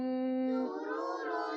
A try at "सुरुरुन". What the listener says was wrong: सीन पे सीटी की आवाज है, सा नहीं है, सुरुरुन,